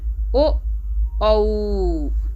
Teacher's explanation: कंठोष्ठ गले और ओठ की सहायता से बोला जा रहा है।